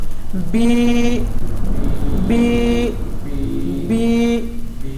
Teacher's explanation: بی ہونٹوں کی خشکی سے ادا ہو رہا ہے